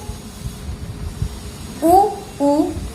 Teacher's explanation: उ और प वर्ग पूरा तथा उपध्मानीय का ओष्ठ उच्चारण स्थान होता है।